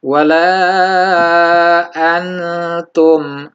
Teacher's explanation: Misalkan ada wala antum tetap samar, tidak antum, tidak jelas n, tapi samar tetap berbunyi nun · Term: hukum ikhfa